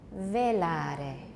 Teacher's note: We've got a tap because Italian has trilled R's and it sounds like a very short trill at the end or a tap